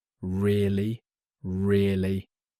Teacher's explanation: When someone tells you something interesting, you can say really with a rising tone. It shows surprise and interest.